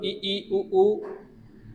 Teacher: संवृत मतलब मुख कम खुला रहता है संवृत में